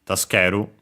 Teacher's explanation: Accented, so on the ke. Notice also the u, barely heard, if at all, of the su, because it's between a voice consonants.